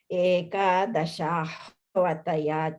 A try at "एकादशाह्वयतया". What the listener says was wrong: yeah, you're missing the ya. Ekadashahvayataya.